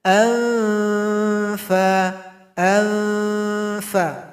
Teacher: huruf fa, tempat keluarnya gigi seri atas menyentuh ke bibir bawah